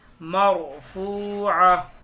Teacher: را ساکن کو ہم پر پڑھیں گے, موٹا پڑھیں گے کیونکہ را ساکن سے پہلے زبر آ رہا ہے